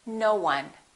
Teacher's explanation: we link it we put a little w in there